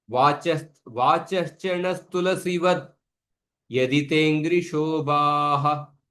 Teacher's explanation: when I chant the first half separately, then you can pronounce the visarga fully.